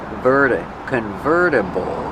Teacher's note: Use a fast D. The T changes to a fast D.